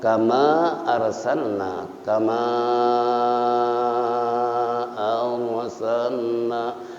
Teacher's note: Boleh dibaca kama arsalna, kama arsalna, kama nah itu mad jaiz munfasil. Ra tafkhim karena sebelum ra sukun ada fathah.